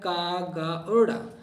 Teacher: अल्प पिराण क्या होता है देखिएगा, अल्प पिराण जिस वर्ण के उच्चारण में थोड़ा श्रम लगाना पड़ता है उसे, और जिससे हकार की ध्वनि नहीं निकलती उसे अल्प पिराण कहते हैं।